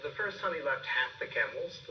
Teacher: we have a rise fall rise fall rise fall · He starts that sentence high here, and then he's listing. And so when he's listing the number of camels, we see that he's rising on each one because he's not done. And then we see a rise and fall as he ends the sentence. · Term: rising intonation